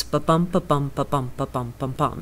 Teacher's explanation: The verse is largely iambic pentameter, which simply means that every line is ba-bum, ba-bum, ba-bum, ba-bum, ba-bum, ba-bum, as its baseline rhythm, an unstressed syllable followed by a stressed syllable, five of those in each verse line